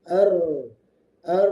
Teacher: Karena huruf lam bertemu dengan huruf syamsiyah yaitu ro. Maka alif lamnya jangan dibaca langsung masuk ke ro. Diidigamkan ke ro ar. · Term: alif lam syamsiyah